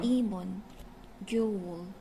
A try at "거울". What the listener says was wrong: 겨울 if you say 겨울 is the winter like 거울. 거울 is much better. 거울. 거울. This is a 겨울 is a 겨 sound GYEO this one